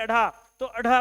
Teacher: अढ़ा बोलते समय वायु की मात्रा ज्यादा होती है